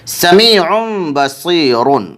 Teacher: تنوین کو میم ساکن سے بدل کر غنہ اور اخفا کے ساتھ پڑھیں گے۔ · یا مدہ ہو رہی ہے کیونکہ یا ساکن سے پہلے زیر اس لیے یا مدہ ہوگی، یا مدہ کو ایک الف کے برابر کھینچ کر پڑھیں گے۔ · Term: اقلاب